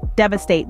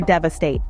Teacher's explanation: the emphasis falls on the first syllable Dev followed by a and then State pronounce it slowly Dev aate